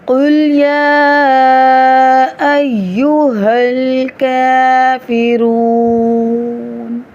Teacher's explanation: قاف موٹا، لام باریک، قل یا کے اوپر مد بھی ہے اور کھڑا زبر بھی، تو اس کو 4 سے 5 حرکات کے برابر کھینچ کر پڑھیں گے۔